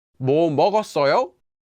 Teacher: just put a higher intonation on the verb instead of on the word